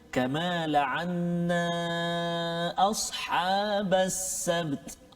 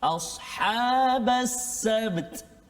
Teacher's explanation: Bertemu atau berkumpul dua huruf yang sukun, yang mati. Ba sukun, ta pun kita matikan dia dengan sebab nak waqaf. Jadi semua kena bunyi. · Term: ijma' harfani sakinain